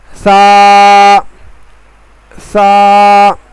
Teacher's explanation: سا کا مخرج زبان کی نوک اور اوپر کے دانتوں کے کنارے سے ادا ہوتا ہے